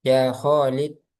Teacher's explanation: Misalnya memanggil Khalid, kho-nya ada matnya, ada mat tabi'inya. Jadi memanggilnya ya Khalid, nah, nggak dipanjang-panjangin, ya Khalid, nah, ya Khalid Ta'al misalnya.